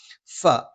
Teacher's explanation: മേലെ മുൻബല്ലിന്റെ താഴ്ഭാഗം താഴെ ചുണ്ടിന്റെ പള്ളയിലാണ്